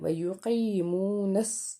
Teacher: ویوقیمو okay نون زبر نا ویقیمونس نون کو سواد سے ملائیں گے، سواد کے اوپر تشدید ہے، سواد 2 بار پڑھا جائے گا، سواد حروف مستعلیہ کا حرف ہے، اس لیے اس کو ہم نے پر پڑھنا ہے، اور ساتھ اس کو بھی یاد رکھنا ہے کہ یہ حروف صفیریہ ہے، جب ہم اس کو پڑھیں تو سیٹی کی آواز آنی چاہیے۔